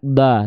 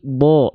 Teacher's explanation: kalau huruf tebal itu ketika dia berharakat fathah bunyinya bukan A tapi bunyinya akan condong pada vokal O